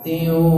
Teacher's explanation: tiu tanwin ketemu dengan wawu ditahan karena dengung. Tiu masuk ke rongga hidung.